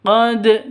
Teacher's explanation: Dal syaratnya harus mati atau sukun ini sudah memenuhi syarat berarti ini bacaan Qalqalah harus dipantulkan ke dalnya ke huruf qalqalahnya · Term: Qalqalah sugro